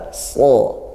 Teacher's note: Baca tebal so. Artinya pangkal lidahnya dinaikkan ketika so. Ketika sa turun pangkal lidah jadi tipis